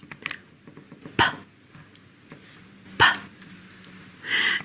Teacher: Notice it's unvoiced, so there's no vibration there. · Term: unvoiced consonant P